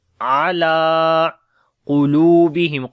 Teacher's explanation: ain we read from the middle of the throat, lam we long due to standing fatha on it.